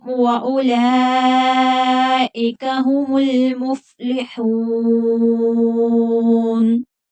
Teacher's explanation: یہاں پر بھی مد متصل ہوگی، 5 الف کی مقدار کے برابر کھینچ کر پڑھیں گے